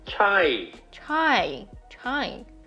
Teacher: there's a slight rising and then the falling tone contour